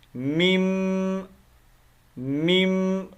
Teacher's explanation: میم کو ڈائریکٹ میم کے ساتھ ملائیں گے، نون کی آواز نہیں آئے گی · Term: ادغام